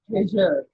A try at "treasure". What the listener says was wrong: Awesome. One more time.